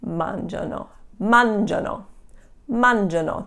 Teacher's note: the loro conjugation, when it's a 3-syllable word, the accent is going to be on the first syllable